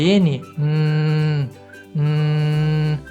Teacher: Se você fizer, por exemplo, o som da letra N, você vai ver também que esse som, que a ponta da sua língua vai bloquear a passagem do som pela cavidade bucal e o ar vai escapar pelo seu nariz, produzindo assim a consoante.